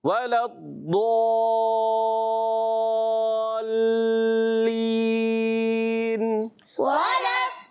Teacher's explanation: ضاد بھی مشدد ہے، لام بھی مشدد ہے. دونوں کو تھوڑا رک کر ادا کریں گے